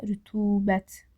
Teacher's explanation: Rütubətdə rütubət u uzanır.